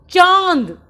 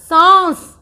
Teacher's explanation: इसका उच्चारण नाक और मुख दोनों से ही होगा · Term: चंद्रबिंदु